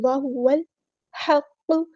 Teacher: ساتھ ملا دینا ہے، حمزۃ الوصل ہمارا ڈراپ ہو جائے گا، لام یہاں پر لام قمریہ ہے، اس کو ہم ظاہر کریں گے